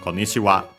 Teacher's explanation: the accent technically is accented on the last syllable, so yeah, on the wa itself. Konnichi on its own nowadays not used, usually accented on the first syllable.